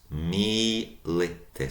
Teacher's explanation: So long first syllable, mi, short, li, short, tis.